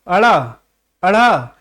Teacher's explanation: जीभ ऊपर की ओर फेंक रहा है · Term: उत्क्षिप्त व्यंजन